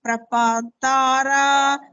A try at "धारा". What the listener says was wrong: धारा not Tara धारा fourth the धारा dhara no you are again telling T, it is D for doctor, not T for tube light. D.